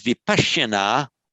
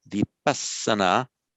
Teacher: And there are two rules at play here when we translate the sh into Pali, is that the sh becomes a s and the conjunct consonant becomes a doubled.